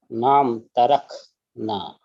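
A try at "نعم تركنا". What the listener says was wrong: MashaAllah. So it sounds that if it's a kha, but it is a kaf only, and that is the right way to pronounce it.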